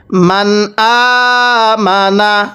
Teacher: তাহলে নুন সাকিনটা আমরা স্পষ্ট করে পড়ব।